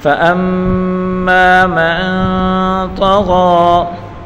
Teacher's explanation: فَأَمَّا مَن طا کے اوپر بڑی حرکت ہے، بغیر کھینچے پڑھیں گے اور غین کے اوپر کھڑی حرکت ہے، اس کو ایک الف کی مقدار کھینچ کر پڑھیں گے